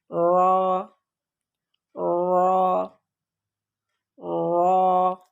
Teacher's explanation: زبان کا پچھلا حصہ تھوڑا سا فولڈ ہو کر اوپر والے مسوڑوں سے لگتا ہے